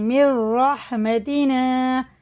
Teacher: اس نون کی جگہ را کو لگا کے پڑھیں گے، منیر نہیں پڑھیں گے